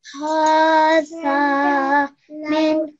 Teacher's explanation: I have to make the zal sound long for 2 seconds